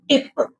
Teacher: okay, then while pronouncing the letter ट, ट, सो आ टंग हमारा जो हार्ड पैलेट को टच कर रहा है, सो ट, if we are saying टिप, so the vocal cords remain still voiceless